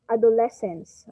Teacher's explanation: and how we pronounce this word is adolescence okay adolescence so the stress is on the third syllable